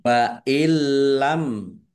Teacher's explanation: bila gunah, masuk dengan tidak mendengung, langsung masuk ke huruf lam tetapi tidak mendengung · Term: idgham lam